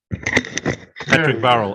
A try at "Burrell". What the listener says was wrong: Bureau. It's not an A, it's a U.